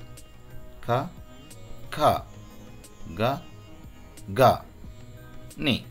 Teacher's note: ఈ కవర్గా అన్నది మనకి త్రోట్లో నుంచి వస్తాయి వాయిస్ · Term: కంటయ త్రోట్